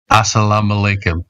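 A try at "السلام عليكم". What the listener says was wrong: You need to train for the ayn. Ayn is very like deep letter from like the throat, deep throat letter. Ayn, you know. So assalam is easy. All the letters you can pronounce it already speaking English. Say assalam. But when it comes to alaykum, this is like you need to train about ayn. Yeah, it's very hard to train, but to get it.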